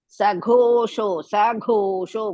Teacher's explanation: ಘೋ ಇಸ್ ಮಹಾಪ್ರಾಣ ದೀರ್ಘ ಶೋ is also ದೀರ್ಘ ಧಾರ್ಥ ರ ಶುಡ್ ಕಮ್ ಬಿಟ್ವೀನ್ ಧ ಅಂಡ್